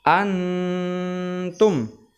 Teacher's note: tidak lagi menyamarkan ya tapi Nam sukunnya jelas ya seperti ya izhar akan tetapi diberi dengung